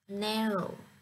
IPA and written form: ˈnæroʊ (Narrow)